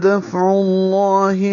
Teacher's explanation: فا پہ ہمس ہے اور عین وسط حلق سے